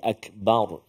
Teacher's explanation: huruf ra yang kita matikan dia Jadi dia bunyi tebal Akbar yang tebalnya ro bukan ba tu kalau tak jadi Akbar